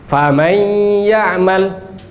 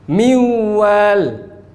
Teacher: Nun hilang, gunnah tetap. Maka idgham naqis.